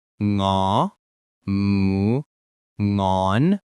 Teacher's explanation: your tongue touches the back of your soft palate, not your teeth. Exactly. You can think of it like the ending sound in English words sing or song.